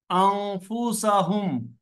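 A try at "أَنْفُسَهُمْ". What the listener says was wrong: কোনো টান হবে না, শুধু হ্যাঁ নুনের উপরে আরেকটু অপেক্ষা করবেন স্যার।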